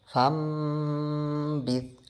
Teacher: جیسے first sentence کو ہم پڑھیں گے فم بذ۔ اب دیکھیں نون ساکن کے بعد با آ گیا تو اس نون کے ساؤنڈ کو ہم نے میم سے چینج کر دیا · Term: اقلاب